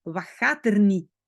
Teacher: Donc souvent les T à la fin, on ne les prononce pas.